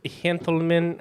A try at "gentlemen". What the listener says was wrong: That was a really soft G.